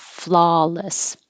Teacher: flaw is awe so open and keep the lips straight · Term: ah